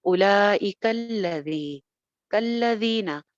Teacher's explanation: ذال جیسے کہ پہلے بتایا سافٹ لیٹر بغیر سیٹی کے، اس کو زینا نہیں کہنا